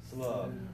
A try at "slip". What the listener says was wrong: So push your tongue more forward.